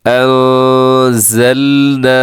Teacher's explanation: زا زا زا کا خیال کرنا ہے، اس میں سیٹی ہوتی ہے